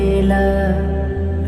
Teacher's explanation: লামের মখরাজ জিহবা অগ্রভাগ দুই পাশে দুই কিনারা, সামনের উপরের দাঁতের মাড়ির সাথে লাগিয়ে বলতে হবে লা